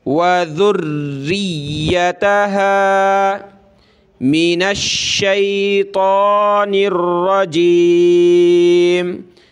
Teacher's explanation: را کو یا کے ساتھ ملائیں گے، را اور یا کو سخت کرنا ہے تشدید کی وجہ سے